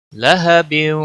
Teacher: लहबिन, वाव पर गुन्ना होगा